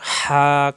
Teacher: কণ্ঠনালীতে চাপ দিয়ে একালিপ টান, মাদের হরফ, না একালিপ টান, হা একালিপ টান, না রুন হা।